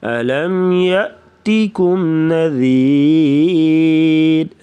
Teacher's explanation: یا کے ساتھ حمزہ ہے تو جھٹکے کے ساتھ پڑھیں گے